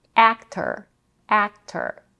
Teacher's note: The first vowel in the word actor is as in cat, and we have an R color schwa in the second syllable.